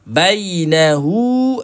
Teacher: hu ini dibaca dengan 2 harakat. Maksilah qasirah nama dia.